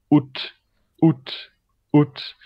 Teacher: Et sur les voyelles, on met un arrêt glottal, la voyelle et un T.